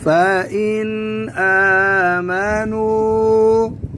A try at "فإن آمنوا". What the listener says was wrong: नाक में बात ना दे